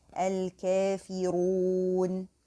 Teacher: make the prolonging because of stopping in the waw. Make it 2 counts or 4 counts.